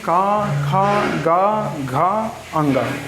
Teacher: का वर्ग यानी का, खा, गा, घा, अंगा। ये कैसे आएंगे, ये सब कंठ में आएंगे